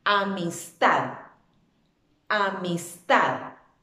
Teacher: es una palabra aguda. ¿Por qué? Porque su fuerza de voz recae sobre la última sílaba